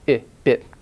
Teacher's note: The short vowel, I, the tongue is relaxed, and therefore it's a little bit lower, and it is not sticking out quite as much, not quite as forward. And so the quality is different.